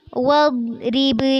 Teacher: रॉ को बारीक रखना है और बा पे कलकला करना है, यानी कि झटका देना है।